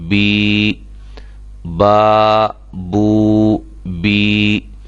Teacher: یہ تینوں حروف یعنی کہ یا مدہ، واو مدہ اور الف مدہ حروف مدہ کہلاتے ہیں۔ ان کو ایک الف کے برابر کھینچ کر پڑھا جاتا ہے۔